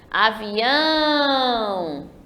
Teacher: percebam que eu demorei mais no ão. O ão aí que está destacado de vermelho é a última sílaba forte. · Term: oxítona